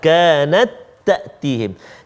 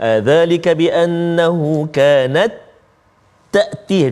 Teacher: Semuanya masukkan ta yang pertama tu ke dalam ta yang kedua. Sama sifat, sama makhraj.